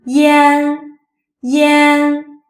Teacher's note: This sound is produced by pronouncing the simple final E shortly, followed by N. This sound is close to the word yen, Japanese unit of money in English.